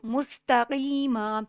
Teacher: کاف مرکز والا باریک پڑھا جاتا ہے. مستقیما سین پہ سٹی کی آواز آئے گی